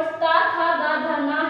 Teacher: और ता था दा धा ना है, ये दंत कहलाते हैं, इनका उच्चारण स्थान दांतों से स्टार्ट होता है, हमारी जो वायु है वो दांतों से होकर स्टार्ट होती है।